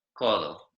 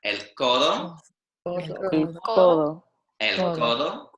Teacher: So the o, the vowel, sounds harsh, o. But the C and the D are very soft.